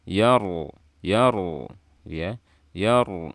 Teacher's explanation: ada ro mati sebelumnya fathah dibaca tebal